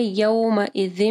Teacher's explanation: یومئذ، یوم نہیں پڑھنا، واو ساکن سے پہلے دیکھیں یا کے اوپر زبر ہے، مدلین آ رہی ہے